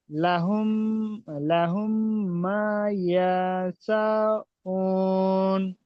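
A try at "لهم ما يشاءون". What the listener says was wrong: উ টান দিলেন কেন? উ টান আছে না ইয়াশা টান আছে? কোনটা মাদ? ইয়াশা মাদ তো। মা ইয়াশাউ।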